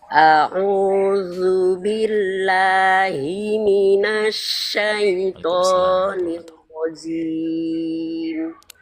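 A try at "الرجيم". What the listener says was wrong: Bukan jim, ya jim ditahan. Nirrajim.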